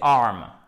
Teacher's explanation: vous n'avez pas de H aspiré, ce n'est pas harm, ok?